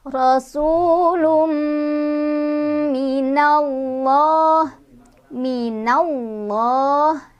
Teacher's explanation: Di sini lafaz Allahnya dibaca secara tafkhim ya, karena sebelum lafaz Allah ada huruf berbaris fathah. Jadi kalau misalkan mau menentukan lafaz Allah itu dibaca tafkhim atau tarkik, dibaca tebal atau tipis, kita lihat huruf sebelumnya, barisnya di atas atau di bawah.